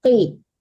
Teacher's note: qafnya ditebalkan ya Bu, qaf. Wa idaqi, jangan ki ya, tapi qi.